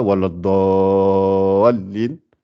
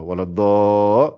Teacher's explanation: Il y a le da, c'est l'allongement du dad. Après, il y a le lam avec shadda.